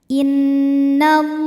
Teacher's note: Lam pada lafaz Allah dibunyikan secara tafkhim karena huruf sebelumnya berbaris fathah, maka bacanya tebal. Innallah. Alif lamnya dinamakan dengan alif lam syamsiyah karena alif lam menghadapi huruf syamsiyah yaitu huruf lam, maka alif lam tidak kita baca.